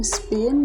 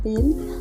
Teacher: kata atau pengaruh bunyi lain di sekitarnya contohnya dalam bahasa Inggris bunyi p dalam Spin dan PIN terdengar berbeda karena adanya aspirasi hembusan udara pada pin